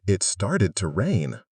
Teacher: Notice the stress on rain and home. Those are the important words.